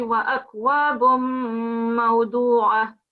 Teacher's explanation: I think if you're pausing here, the ta marbuta will convert into a ha sound